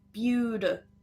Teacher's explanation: But notice when we have it in the word beautiful, it's no longer a stop T. It's a flap T, which sounds more like a soft D.